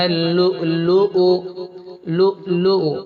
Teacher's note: حمزہ ہے تھوڑا جھٹکے کی آواز آنا ہے